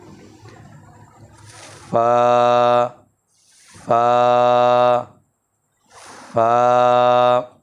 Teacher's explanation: اوپر والے 2 درمیانی دانتوں کا جو کنارہ ہے وہ نچلے ہونٹ کی تری والے حصہ کو لگے